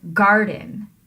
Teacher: In contrast to that, a trochee is the opposite of an iamb because it gives the stressed syllable first and the unstressed syllable second